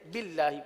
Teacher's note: یہاں اللہ کے لام کو باریک اس لیے پڑھیں گے کہ اللہ کے لام سے پہلے زیر ہے